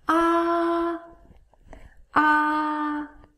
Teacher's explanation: the first tone is a high tone ah it's the highest tone so rise up your pitch